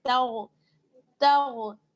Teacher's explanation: یعنی اس کو پر پڑھنا ہے، تا غین زبر تاغ، تاغ، تگ نہیں پڑھیے گا، گاف نہیں ہے یہاں پہ بلکہ غین